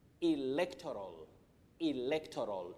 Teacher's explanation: The stress is on le. That is the primary stress.